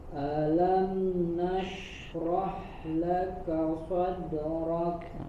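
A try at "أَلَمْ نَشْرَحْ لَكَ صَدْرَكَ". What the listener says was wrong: Nashrah, huruf H-nya jelaskan lagi sifat hams dan suaranya. Nashrah laka sadrak.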